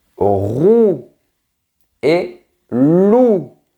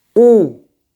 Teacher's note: On continue avec le son OU, comme dans les mots vous, roux et loup. Ta langue est bien en arrière.